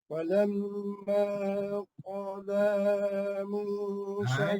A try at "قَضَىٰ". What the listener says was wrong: Jangan bunyi qada lah. Bo ni kena angkat bunyi bo. Jangan bunyi da. Da tak angkat lidah tu, angkat lidah. Bo. Apabila kita bunyi bo tu pakai lidah dengan lidah sekat.